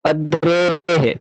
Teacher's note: तो अथैनम अद्रेह विसर्ग था, अद्रेह, जिसका उच्चारण हकार के समान होता है उसको हम विसर्ग कहेंगे